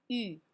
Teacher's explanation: No glides here, so we do oo position with our lips, and then our tongue is going to say E. So first we have lip position, U.